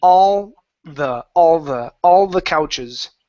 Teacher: so connect that L to the word the